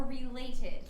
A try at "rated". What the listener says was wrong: You said related again.